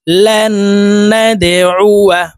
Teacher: এই দালকে ধাক্কা দিয়ে উচ্চারণ করে পড়তে হবে, নিচের দিকে ধাবিত করে ধাক্কা দিয়ে উচ্চারণ করতে হবে। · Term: কলকলার হরফ